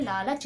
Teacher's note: लालच बोलने में भी ला बोलते ही आपकी जीभ आपके दांत से टच करेगी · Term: दंत वर्ण